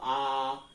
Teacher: आ को विव्रत में रख दिया, ओपन में रख दिया, जिसमें मुख द्वार पूरा खुला होता